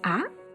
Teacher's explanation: the second tone is called rising tone or high-rising tone